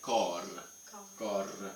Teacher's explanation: So that's a very rolled R.